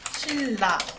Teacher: 니은이 유음 리을을 만나서 리을로 바뀌는 것입니다. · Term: 유음화